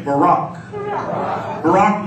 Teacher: b a r a k and it's pronounced b a w second syllable r a k with the accent on the second one